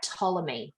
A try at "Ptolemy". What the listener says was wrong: I would suggest the P is silent.